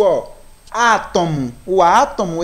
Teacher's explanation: o acento agudo ele vai permitir tenha um som mais aberto né um som mais oral